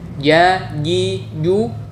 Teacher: Huruf jim, ja, ji, ju tengah lidah harus benar-benar menempel pada langit-langit di atasnya